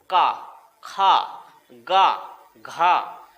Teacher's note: जब हम इनका उच्चारण करते हैं तो आवाज हमारे गले से यहां से निकलती है, ना ही जीभ का इस्तेमाल होता है, ना नाक का इस्तेमाल होता है, और ना ही होठों का प्रयोग होता है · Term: कंठ